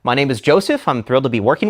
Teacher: Many of us have the tendency to end our sentences with what is known as uptalk or upspeak, a speech pattern where the intonation or pitch rises at the end of a sentence as if posing a question. This pattern can transform statements of fact into something that sounds uncertain.